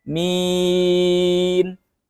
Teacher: Jadi hanya mimnya saja yang gunnah, tapi ya-nya tidak.